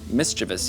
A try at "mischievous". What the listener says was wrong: It's not mischievous. There's no I. There's no second I in mischievous.